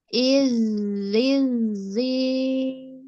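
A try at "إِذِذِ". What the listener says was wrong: Belum dapat rokhawahnya.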